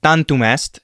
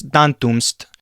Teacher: the final M sometimes is omitted when you are reading literature